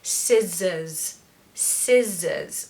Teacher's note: so there's a schwa at the end of course another schwa we don't pronounce the r because it falls after the vowel sound so scissors scissors so it's a z sound in the middle